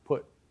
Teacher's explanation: You also make a glottal stop, at least the way I just said it